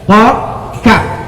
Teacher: Qaf di dalam, kaf di luar.